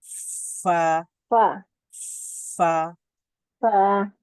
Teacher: ফা এর মধ্যে আওয়াজটা জারি থাকে তো ফা উচ্চারিত হবে এখান থেকে তারপরে দুই ঠোঁট দাঁতের কাজ · উপরের দাঁতের অগ্রভাগ নিচের ঠোঁটের ভেজা জায়গা বা নরম জায়গা সেখানে যুক্ত হয় উচ্চারিত হয় ফা ফা ফা ফা এবং ফা এর একটা বৈশিষ্ট্য আছে যেটা আমরা